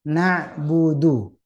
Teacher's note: saat dipanjangkan itu vokal u itu dengan monyong sama dengan menyebut huruf wau